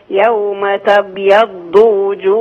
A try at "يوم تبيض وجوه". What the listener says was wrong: ماشي كويس بس انقلقل بقى الباء.